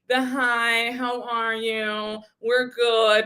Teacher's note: all give Kardashian with that vocal fry